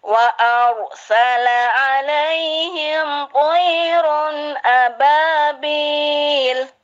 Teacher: Dan ro itu tidak boleh bergetar kayak bahasa ro-nya Indonesia, R-nya Indonesia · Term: ro Arab